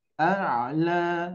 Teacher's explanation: Jadi dibaca 2 harakat ketika kondisi diwakafkan. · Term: fathah bertemu alif bengkok